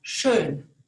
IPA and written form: ʃøːn (schön)